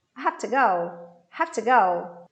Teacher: I stress have and I stress go.